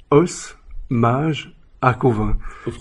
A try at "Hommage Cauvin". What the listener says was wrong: En français, on ne prononce pas le S, c'est Hommage Cauvin.